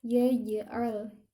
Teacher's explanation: sifat jim dia tidak mengeluarkan angin ketika dibaca